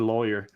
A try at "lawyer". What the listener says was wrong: You're putting a lot of emphasis on the A.